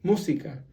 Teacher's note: you have to stress the word on the first syllable